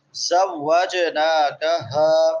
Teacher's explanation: کھڑی زبر ہے، ایک الف کے برابر لمبا کریں گے، زوجناکہا، آخر پہ بڑی ہا ہے حلق کے آخری حصے سے